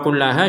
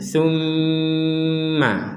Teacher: Apa bedanya tasydid di atasnya lam sama tasydid di atasnya mim? Kalau tasydid di atasnya lam, kita hanya menekan saja. Kalau tasydid di atasnya mim, kita menekan plus ada dengungnya. Summa. Maka kalau kullaha jangan pakai dengungan.